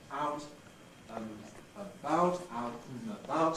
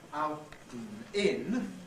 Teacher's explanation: Out and in has to remain syllabic and. But in out and about, and can be reduced just to a non-syllabic N consonant. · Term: compressible